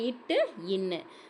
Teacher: நாவின் நுனி அன்னத்தின் நுனியை பொருந்துவதால் பிறக்கும் எழுத்து. நாவோட நுனி வந்து அன்னத்தின் நுனியை பொருந்துவதால் பிறக்கும் எழுத்து இது இட்டு, இன்னு.